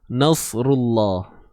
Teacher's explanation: Lam pada kalimah Allah ni tebal sebab sebelumnya baris depan itu aja. Okey, bukan sebab ra tu tebal, tapi sebab sebelumnya tu terdapat huruf yang berbaris hadapan.